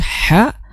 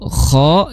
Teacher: Kalau ko itu di tenggorokan paling ee tengah tenggorokan, maaf ya untuk ha jadi bersih tidak ada suara ya. Tapi kalau ko itu ada suara seperti ngorok ya